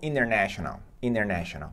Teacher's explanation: sem pronunciar a letra T